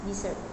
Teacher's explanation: in the word desert, noun meaning a dry region, the first syllable is stressed